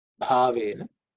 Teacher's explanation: bha is again fourth letter in the pa varga, pa, so it has to be aspirated.